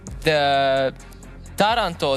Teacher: The Taranto, the city in Italy, the stress is on the first syllable.